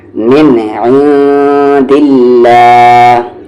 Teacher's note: اللہ کے لام سے پہلے یہاں پر زیر ہے تو یہ اللہ کا لام لائٹ ہوگا. من عند اللہ، واللہ یہ ہیوی ہوگا کیونکہ اس سے پہلے زبر ہے.